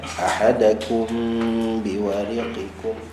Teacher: Baik, ada mim mati dekat situ. Mim mati jumpa dengan ba, kita dengungkan dua harakat.